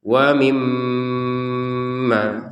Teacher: Giliran mim bertasydid tidak hanya ditekan tapi dengan dengungan.